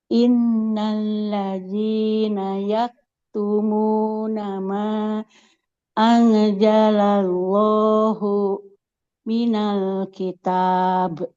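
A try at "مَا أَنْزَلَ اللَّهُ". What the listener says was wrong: Nah, jangan angja huruf zai nggak boleh jadi jim. angza mirip z. Nah, ma anzalallahu minal kitab.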